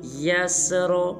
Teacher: آخر میں را کو پر ادا کریں گے